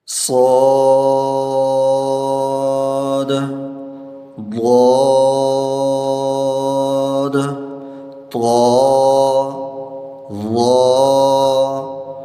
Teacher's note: ان 7 حروف میں سے پہلے 4 حروف صاد، ضاد، طا، ظا کو اور بھی زیادہ پر پڑھیں گے، مطلب خا، غین، قاف کے مقابلے میں ڈبل پر پڑھیں گے، کیونکہ ان حروف کی ادائیگی کے وقت زبان کی بیچ بھی اوپر تالو کے ساتھ چمٹ جاتی ہے، تبھی یہ حروف خوب پر ہو جاتے ہیں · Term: حروف مستعلیہ